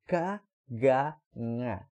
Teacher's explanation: aquela consoante nasal ali é feita no mesmo local de G de manga, né? Uma nasal que fica lá atrás da boca